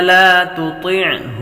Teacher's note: یہ تا باریک ہے اور دوسری طا موٹی ہے، حروف مستعلیہ میں سے آپ پر کریں گے۔